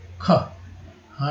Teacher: ख बोलते समय ह आता है, इसलिए के एच।